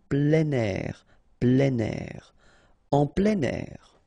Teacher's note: you've got this air here, and then we tend to make the liaison plein air